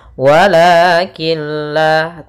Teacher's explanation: masukkan huruf nunnya atau tanwinnya ke huruf lam sehingga suara nunnya hilang dan tinggallah suara lamnya. Walakin la, tapi dia tidak disertai dengan gunnah, tidak ditahan. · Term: idgham bila gunnah